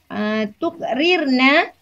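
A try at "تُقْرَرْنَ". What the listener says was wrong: Bukan. Ibu tadi bilang tukrir. Harusnya bukan rir, tapi fathah.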